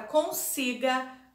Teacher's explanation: A palavra consiga, a sílaba tônica é si.